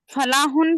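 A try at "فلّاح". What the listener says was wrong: फला नहीं, फल्ला, फल्ला, लाम पे शद है। हाँ, फल्ला का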